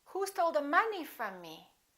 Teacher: from is a preposition so we don't stress it it's not a Content word it's a function word and me is a pronoun from me so both of those